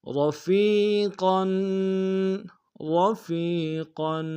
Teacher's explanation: را کو موٹا ادا کریں گے، فا کو یا کے سامنے آئیں گے، یا مد ایک انداز میں کھینچیں گے.